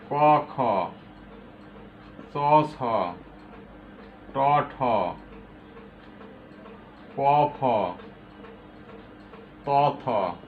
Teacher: বর্গের প্রথম আর দ্বিতীয় ধ্বনিকে বলা হয় অঘোষ ধ্বনি।